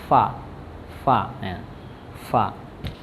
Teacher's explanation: keluar dari bibir bagian bawah, bagian dalam bertemu dengan ujung gigi atas ya. Jadi keluar dari bibir bawah, kemudian bagian yang dalam itu bertemu dengan ujung gigi atas ya.